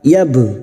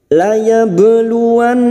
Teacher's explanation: ba sukun qalqalah sugroh yang mati asli di tengah kalimat, jangan lupa dipantulkan